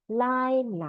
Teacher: Lai is like L plus AI. Second tone